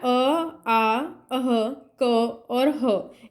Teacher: ठीक है, पहले कहाँ से, हम पिछले भाग से स्टार्ट करेंगे, कंठ। ठीक है, कंठ में हमारा कौन कौन से उच्चारण होता है, अ, आ, अह, क और ह